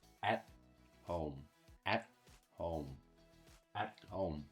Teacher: when you pronounce the T sound, your tongue touches the alveolar ridge. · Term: stop T